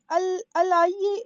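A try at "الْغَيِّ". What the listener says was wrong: یہ غین الغی یہ غین ہے غین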